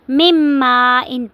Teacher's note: میم کو میم کے ساتھ ملا کر مم ما ان پڑھیں گے